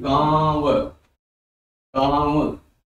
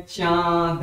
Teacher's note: अनुनासिक या चंद्र बिंदु का प्रयोग बोलते समय देखेंगे नाक और मुंह का प्रयोग करते हैं।